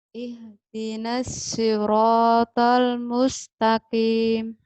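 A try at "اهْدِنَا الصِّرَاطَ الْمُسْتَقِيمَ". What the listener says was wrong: nah itu ke sod ya, bukan ke sin. Ihdinas baso salat. Ihdinas coba sod jangan ke sin ya.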